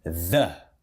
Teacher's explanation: Aquele TH vozeado, que é esse símbolo aqui, mais o schwa.